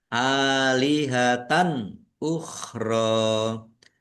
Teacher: Lam fathah berdiri mat tobi'i panjang 2 harokat. · Fathah tanwin bertemu dengan huruf alif bacaan izhar dibaca jelas.